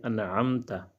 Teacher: ہم حرف کو ظاہر کر کے، خوب ظاہر کر کے، بغیر غنہ کے پڑھیں گے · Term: اظہار